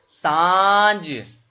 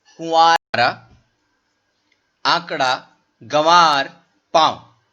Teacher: नाक और मुंह दोनों से हवा निकलेगी, तो वहां पर किसका उच्चारण हो जाएगा, अनुनासिक का उच्चारण हो जाएगा।